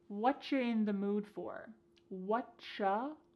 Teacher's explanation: the word you has been reduced to cha cha. This is extremely common in spoken English that the word you gets changed up in a lot of ways.